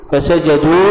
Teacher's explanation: فسجدوا هنا مد على الواو أربع إلى خمس حركات